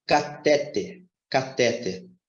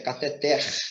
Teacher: Só que essa palavra não é paroxítona ela é oxítona então Observe como é que é a pronúncia dessa palavra já